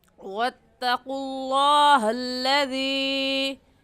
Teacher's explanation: حروف مدہ اس میں یا مدہ ہے، کیونکہ یا ساکن سے پہلے زیر آ گئی تو یا مدہ، اور یا مدہ کو 3 الف کی مقدار کھینچیں گے، اس سے کم یا زیادہ نہیں کھینچیں گے